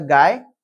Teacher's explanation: Huruf vokal A dan I membentuk diftong AI iaitu suku kata gai, di mana intonasi dan juga hembusannya tidak terpisah antara huruf A dan huruf I dan menjadikannya sebagai satu suku kata.